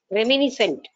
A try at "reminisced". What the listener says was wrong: రెమినిసెంట్ కదా, రెమినిసెడ్ అని ఉంది. REMINISCED.